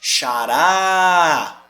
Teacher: Eu estendi a última sílaba tônica.